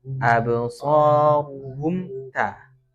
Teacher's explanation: Absaruhum nah itu jangan di mimnya, karena mim itu tidak boleh dipantulkan atau dialirkan. Hum nah langsung habis apa istilahnya, mingkem ya, habis mingkem langsung ke ta. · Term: mim sukun